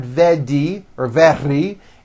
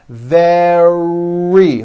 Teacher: make sure that the r sound is strong and your lips are coming forward your tongue is back and you push out the r